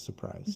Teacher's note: We cut the R. Almost everybody cuts the R and says surprise to express surprise or regret.